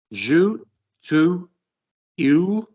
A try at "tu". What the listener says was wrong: Why are we saying two? Why are we linking? We don't do that. So do we ever, unless it's slang French, join the to and the next word? So je is going to join. Tu, keep